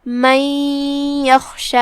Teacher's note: خا کی ادائیگی حلق کے اوپر والے حصے سے ہے. خا حروف التفخیم میں سے ہے، مطلب ہم اسے بھاری آواز میں پڑھیں گے. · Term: حرف الخا